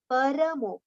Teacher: When we say parmo, ra becomes half. Here ra is with a complete pronunciation. So it should be paramo, separate letters.